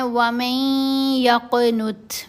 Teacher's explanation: نون ساکن کے بعد یا مشدد یعنی یرملون کا ادغام · من یقنت نہیں پڑھنا، و میں میم کو یا سے ملایا جائے گا اور غنہ کرتے ہوئے، پھر قاف کے اوپر قلقلہ کرنا ہے، تا کے اوپر ہمس کا اظہار کرنا ہے